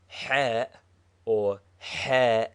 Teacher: is a heavy H from the back of the mouth